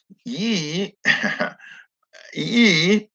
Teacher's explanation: I guess that's what they call a semi-vowel. Ye, there is air flowing through, but the mouth is not open like E